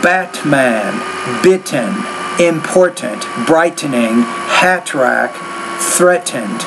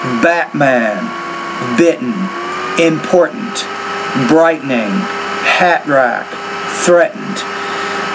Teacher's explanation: you have to work a little bit more on the glottal stop